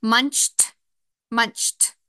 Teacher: Even though I hear the t, I add the suffix ed, and since I have 2 guardian consonants, I'm able to add that suffix on. Ch is voiceless, so we have the sound t for ed.